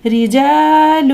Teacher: را کے نیچے زیر ہے، لہٰذا اس را کو بھی باریک پڑھیں گے